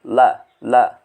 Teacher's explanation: tepi lidah menempel dengan gusi atas ya. Jadi ujung dua tepi lidah itu pada di paling belakang ujung lidah ya, menempel pada gusi dari gigi-gigi bagian atas kalian ya. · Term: huruf la